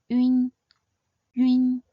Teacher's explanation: “ün” is a nasal final, so start by sounding the simple final “ü”, before closing into a “nn” sound.